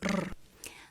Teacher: this traditional spanish r is a rolled r